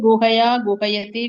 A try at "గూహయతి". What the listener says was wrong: గూకు దీర్ఘం.